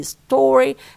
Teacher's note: you say story and you stress the first syllable